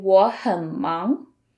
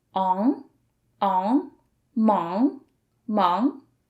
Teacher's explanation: Notice the final of this pinyin 忙 has 3 letters, A and G. So with NG as the ending, you produce a nasal sound at the back of your nose. So it's on, mong, mong.